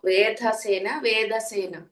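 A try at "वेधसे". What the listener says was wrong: వేదస్ వేదస్ ధా ఒత్తు వేదస్ వేదసే.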